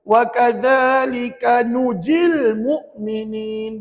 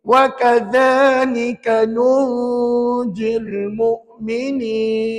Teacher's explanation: Nun mati bunyi tak? Bunyi, tapi secara samar-samar ataupun tidak jelas.